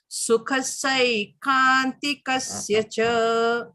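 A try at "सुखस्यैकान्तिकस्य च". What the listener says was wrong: Except not sukhasai, sukhasyai. Yai.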